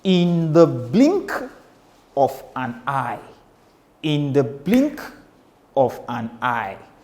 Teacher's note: in the is unstressed, but blink takes you very high and you are stressed to pronounce it. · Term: anapestic meter